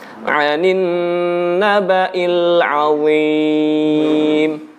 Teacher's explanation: Anin naba. Gunnahnya nun yang bertasdid ditahan dulu.